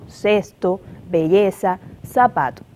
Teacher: Tal es el caso como el ceseo, donde se pronuncia la Z, la C y la S de igual manera, es decir, como S